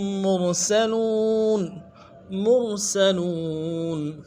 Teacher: را کو موٹا کریں گے مرسلون میں، سین کو باریک ادا کریں گے اور لون میں واو مدہ ہے کھینچیں گے ایک الف مدار میں.